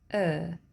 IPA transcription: ɜ: